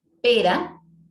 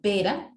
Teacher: Para la R, que es vibrante simple, colocamos R, por ejemplo, en pera